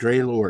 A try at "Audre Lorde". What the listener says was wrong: O O Audrey. Yeah, Audrey. Just Audrey. O. AU is O, like you would in French. It would be O instead of ow, like in American. So Audrey.